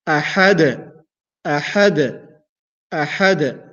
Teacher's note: Instead of saying أحد and stop there, I bounce a little. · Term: qalqala